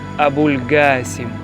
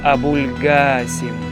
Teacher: з проривною г і протяжною а